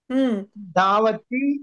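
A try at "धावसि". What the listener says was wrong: మహోదయ మీరు తి అంటున్నారా సి అంటున్నారా? ధావతి అంటున్నారా? పఠసి లాగా చెప్పాలి. ధావసి ధావథః ధావతి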